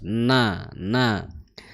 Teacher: makhrajnya huruf nun di ujung lidah bertemu dengan gusi gigi seri atas ya.